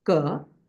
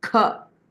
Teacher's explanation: And there is Alpa Prana, ka, and Mahaprana, kha, that is pronounced. So there is a distinction between ka and kha.